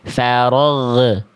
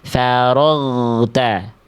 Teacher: jangan biarkan bunyi huruf ghainnya ada bunyi e di ujung pelafalan. Nah, jangan biarkan ada vokal e.